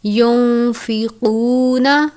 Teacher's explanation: ينفقون موٹے والا قاف ہے. حروف مستعلیہ میں سے قاف واو پیش قو.